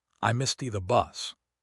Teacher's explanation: Usually we use the stop T, we form the T but don't release it, and move your tongue immediately to the TH between teeth.